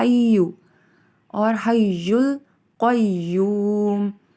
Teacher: قوا کو پر پڑھا جائے گا اور یا کو بھی شد کی وجہ سے شدت سے پڑھا جائے گا